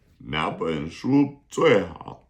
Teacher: 最 is ZUI fourth tone. That's our DZ sound.